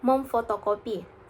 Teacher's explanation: fonem N berasimilasi menjadi nasal bilabial M sehingga menghasilkan alomorf memuk memfotokopi.